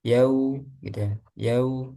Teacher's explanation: Itu jangan condong ke o, yau, tapi condongnya ke u